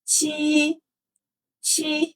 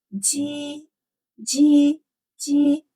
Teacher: It's T sound, like cheese, but lighter and with air release. You feel a stronger air release when you pronounce this T than when you pronounce G.